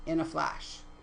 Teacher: Anapest, which is unstressed, unstressed, stress